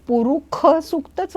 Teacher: आत्ता मला लक्षात आलं की पुरुष सूक्तांमध्ये सुद्धा जिथे श आहे तिथे बऱ्याच वेळेला ख म्हणून उच्चारला जातो